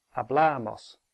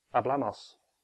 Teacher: That has three syllables, hablamos. So the stress is on the penultimate one, hablamos, no matter how quickly you say it, hablamos.